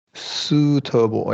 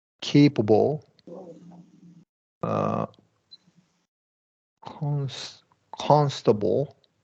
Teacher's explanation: three syllable words that carry the stress on the first syllable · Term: first syllable stress